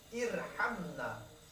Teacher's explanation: karena sebelum huruf ra ada huruf yang berbaris kasrah, maka bacanya itu tipis.